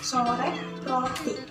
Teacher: Posisi lidahnya agak sedikit lebih rendah dari I dan E, tapi lebih tinggi daripada A. Bentuk bibirnya itu membulat.